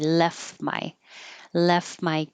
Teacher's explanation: Left my, I don't have to say this T at all. I can just say left my keys on.